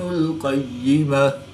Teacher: گول تا کو وقف کی حالت میں ہاں ساکن سے تبدیل کر کے پڑھیں گے